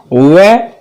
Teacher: और इसका उच्चारण दंत और ओष्ठ के संयुक्त प्रयास से होता है। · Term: दंतोष्ठम